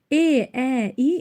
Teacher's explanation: E, ə, i incə dodaqlanmayandır.